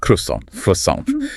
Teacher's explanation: With that hard American R and the really hard T at the end. It just sounds so aggressive compared to the original French.